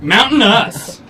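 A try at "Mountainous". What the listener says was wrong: Usually pronounced with a T, MountainUs. No, I just hate the lazy T.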